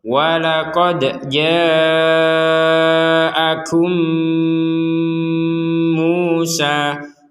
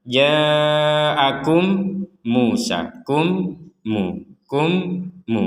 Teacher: Kum, di rongga hidung kita itu ada dengungan.